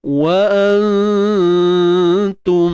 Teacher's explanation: Dan ta ni perlu dinipiskan lah Bukan ta nipis, nun ikhfa tu kita dengung dengan keadaan yang nipis sebab dia jumpa huruf ta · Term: ikhfa hakiki